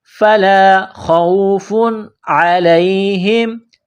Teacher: تنوین کے بعد عین ہے، حروف حلقی ہے تو یہاں تنوین پر غنہ نہیں کریں گے